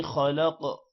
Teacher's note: خلق خا بھی موٹا ہوگا اور قاف بھی موٹا ہوگا